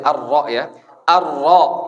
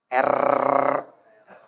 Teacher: Rasain ujung lidah nempelnya ke langit-langit selurus ujung lidah itu. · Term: huruf ro